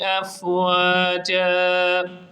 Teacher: افواجا کی فا پر صفت ہمس کو ظاہر کرتے ہوئے اسے درست پڑھیں گے